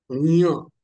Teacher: दुसऱ्याचा साधारण य सारखा होतो य सारखा होतो परंतु नाकामधून उच्चारण होतं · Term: ञ